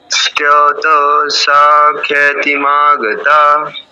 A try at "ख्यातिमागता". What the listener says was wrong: আচ্ছা, খ্যাতি নয়, খিয়াতি, খিয়াতি।